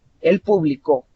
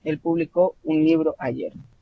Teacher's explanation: si tengo la sílaba tónica en la última vocal, estoy hablando del pasado. Él publicó.